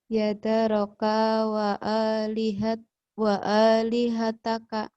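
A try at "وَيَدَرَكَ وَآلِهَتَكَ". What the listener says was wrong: Wanya ketinggalan. Waknya. Waya. Bukan yadaroka. Wanya jangan ditinggalin dong. Wayadaroka.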